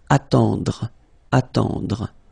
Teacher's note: final E, you don't insist on it, it just gives you the possibility to pronounce the dr